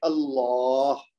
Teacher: پہلا لام ترقیق یعنی باریک پڑھا جائے گا اور دوسرا لام مفخم یعنی کہ موٹا پڑھا جائے گا